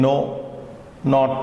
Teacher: The na is a simple dental sound. Na is like in no, not, etc.